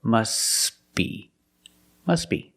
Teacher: T is silent because it's between consonants. When you link the words, must be.